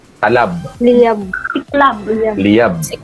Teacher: pasara pa rin yung meet up, yung pag-meet ng dalawang labi natin, mga labi natin, pasara siya.